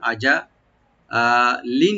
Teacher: লামের নিচে যে দুই যে তানবিন আছে এখানে আমরা লাইট গুণা করব